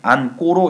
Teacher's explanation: 니은 뒤에 자 기본형 안다니까 어간 받침에 니은이 있고요. 그 뒤에 예사소리 기역이 안꼬로 이렇게 바뀐 겁니다. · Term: 된소리